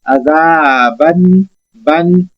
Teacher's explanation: حمزہ بشکل الف ہے، عذابن، بن، نون کو ظاہر کریں گے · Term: اظہار